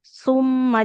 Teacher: su ujung lidahnya nempel ke ujung atas summa. Jadi enggak ada desisnya.